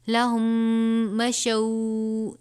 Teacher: لہم، میم ساکن کے بعد مشو، اس مشو میں یہ میم ساکن کے بعد دوسری میم ہے، یہاں پہ بھی ادغام شفوی کا قاعدہ لگے گا، یعنی غنہ کر کے پڑھیں گے. لہم مشو، اس کو مشو نہیں پڑھنا، شین واو زبر شو.